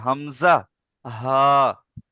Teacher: হালাকের বা কণ্ঠনালীর শুরু হতে উচ্চারিত হয়। কণ্ঠনালী বলতে এই নালীটা দেখতে পাচ্ছেন, এই গলার, এটাকে কণ্ঠনালী বলা হয়।